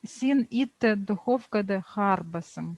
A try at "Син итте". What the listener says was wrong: Урта, все правильно, только правильно прочитать надо. Син и ты. Не итты, а и ты. Ударение падает на ты. Син и ты.